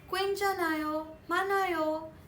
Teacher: When the consonants n and h come together in the bachim, the n is actually pronounced and the h is eliminated.